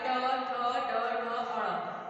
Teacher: जो ट, ठ, ड, ढ, अण होता है मूर्धन्य, इसका उच्चारण मूर्धा से होता है।